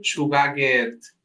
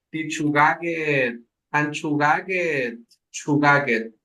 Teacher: Suena con G porque está después de una A y está entre una E, ¿sí? La K en medio de vocales suena a G.